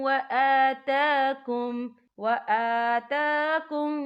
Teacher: یہاں دونوں جگہوں پہ کھڑی حرکات ہے تو ہم یہاں 2 یا 3 حرکت کے برابر کھینچیں گے